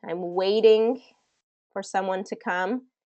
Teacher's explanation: when a t is surrounded by two vowels it tends to be pronounced as a D sound instead of a t